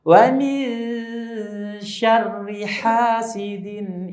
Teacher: mendekati huruf yang akan diucapkan sambil suara dimasukkan ke pangkal hidung dengan guna-guna nya dipanjangkan lebih dari dua harokat